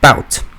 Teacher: Long Ooh sound shifted to Ow in words like bout